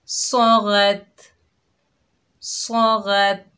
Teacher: सौद और गैन हुरूफ़ मुस्तालिया में से हैं, मोटे अदा होंगे